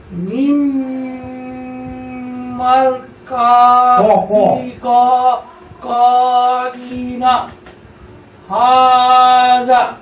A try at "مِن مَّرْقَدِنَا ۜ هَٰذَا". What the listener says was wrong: হ্যাঁ, ঠিক আছে।